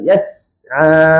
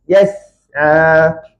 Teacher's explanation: Bagi angin sin sempurna dulu, baru sebut ain.